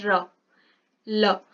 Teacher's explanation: जब हम र बोलते हैं तो र बोलते टाइम हमारी जो जिह्वा है वो कहाँ पे टकरा रही है, हमारे दांत के ऊपर वाले पोर्शन पे टकरा रही है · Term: दंतमूल